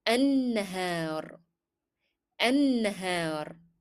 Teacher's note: we are again not pronouncing lam in the definite article L because it is followed by a shadda letter. And I stressed on noon as if there were two noons here.